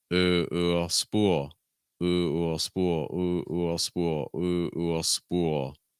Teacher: So it's the oo sound with a dark L. When you're making the oo sound, my big recommendation is to try to keep your lips straight, because if you round your lips, you may shift back into your first language placement.